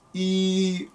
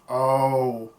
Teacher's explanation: So consider saying the sound E, your tongue goes up. If you were to say the sound O, your tongue goes down. So keeping your embouchure the same as much as possible, try and put your tongue in the position of E, and then put your tongue in the position of ow, and then blow through the mouthpiece, E, O.